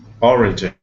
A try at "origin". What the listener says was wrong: Yeah, absolutely. That's better.